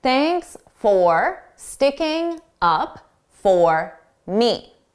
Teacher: the word for sounds like fur, fur. This is because it's unstressed.